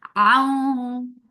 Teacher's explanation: This is idgham with gunna, so keep the sound in your nose for a longer time and circle your lips to when you are saying wow.